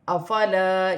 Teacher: الف مدہ ہے، اسے ایک الف کی مقدار کھینچ کر پڑھا جائے گا